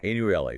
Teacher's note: Four syllables. Stress on the first